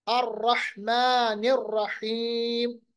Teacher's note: را کو دونوں جگہ تقریر، تھوڑا سا لرزراہٹ، دونوں جگہ حا وسط حلق سے ادا ہوگا. میم کو ساکن بنا کے یا کو لمبا کیجیے.